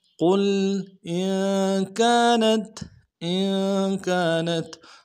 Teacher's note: قاف موٹا کریں گے، لام کے ساتھ ملانا ہے · حمزہ کو نون ساکن کے ساتھ ملائیں گے، غنہ کریں گے